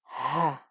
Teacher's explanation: It's the deep ha. It's not the breathy one, it's a very deep one, the kind that you would use to try and warm up your hands on a cold day.